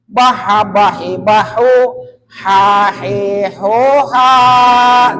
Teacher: H kecil dari mana? H tengah-tengah tenggorokan